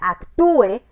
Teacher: La palabra actúe, donde la U era una vocal debilucha, una vocal débil, y suena más fuerte que la E, que era una vocal abierta, una vocal fuerte.